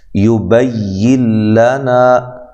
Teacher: نون ساکن کا ادغام ہے لیکن بلا غنہ ہے